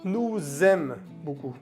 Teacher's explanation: Se hace la conexión entre el nous y el aime. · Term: liaison